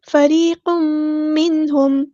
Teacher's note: فریق منہم، را ہمارا یہاں پہ باریک لیٹر ہے، ہم باریک پڑھیں گے، اور یا ساکن سے پہلے زیر ہے تو یا مد آ گیا، ہم مد اصلی کریں گے، ایک الف کے برابر لمبا کریں گے۔ فریق منہم، تنوین کے بعد میم آیا ہے، یہاں پہ ادغام ہوگا، ادغام مع الغنہ یعنی ادغام ناقص۔ فریق منہم، یہاں پہ نون ساکن کی آواز پہ اظہار ہوگا، ہم ظاہر کریں گے، منہم، منہم نہیں کرنا ہے، ہلانا نہیں ہے، منہم، ہاں ہم نے سمپل ادا کرنا ہے، میم ساکن پر اظہار شفوی ہوگا، ہم یہاں پر ٹائم نہیں دیں گے۔